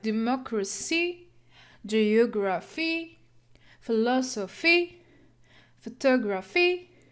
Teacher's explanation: In these examples, primary stress is on the antepenultimate syllable, third from the end. Words that end in C, T, F, G, like democracy, geography, philosophy, photography.